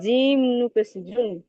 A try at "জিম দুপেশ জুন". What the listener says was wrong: জিম নুপেশ নয়, নুন পেশ জুন। আরে, জিম দুপেশ জুন আর জিম নুন, নুনটা স্পষ্ট উচ্চারণ করেন, নুন পেশ জুন। তানমিন আর নুন সাকিনের আওয়াজ একই রকম।